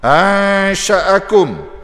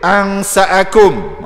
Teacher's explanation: Tafasyi hamburan. Satu huruf saja, shin.